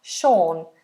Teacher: Sean. That uses quite a difficult long vowel, or. Sean. It's quite far back in the mouth.